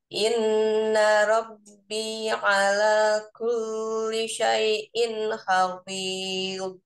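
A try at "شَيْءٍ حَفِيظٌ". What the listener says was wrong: Syai'in hafiz jangan di jeda. Maksudnya jangan seperti ada jangan sedih tak syai'in hafi, tapi syai'in hafil bainiyatan.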